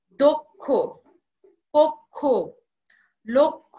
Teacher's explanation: ক্ষীয় বর্ণে থাকলে তার পূর্বে অধ্বনি থাকলে সে অধ্বনির উচ্চারণ ও এর মতো হয়ে যাবে।